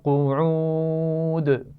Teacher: قعود واو مدہ ہے اور آخر میں پھر دال پر قلقلہ کیا جائے گا. آپ دیکھ رہے ہیں آخر میں دال پر تنوین دو پیش ہے، تو دو پیش کو بھی ہم وقف کرتے ہوئے ساکن کر دیں گے.